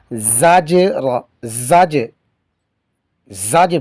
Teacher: یعنی پتہ چلے کہ حروف قلقلہ میں سے جیم آیا ہے اور یہاں پر قلقلہ کیا گیا ہے